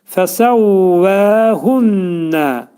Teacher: Sonra hunnə də burada idğam mə'al gunnədir. Yəni nun hərfi burun daxilində 2 saniyə miqdarında nə olacaq? Sıxılacaq.